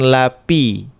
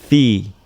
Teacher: ini gigi atas bersentuhan bibir bawah